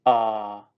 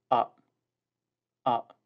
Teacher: the glottal stop which means you must stop the sound